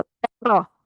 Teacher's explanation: تے کی دفعہ ہونٹوں کو چیریں گے اور را کو پر کریں گے، تیرا کریں گے، یہ تا پر نہیں ہونی چاہیے، کچھ سسٹرز کی تا پر ہو گئی۔